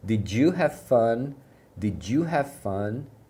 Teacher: Na hora de pronunciar também o did you, você vai perceber que eles juntam o D final do did com o you.